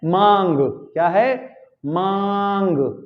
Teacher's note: मांग निकल रही है नाक मुंह दोनों से एक साथ, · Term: अनुनासिक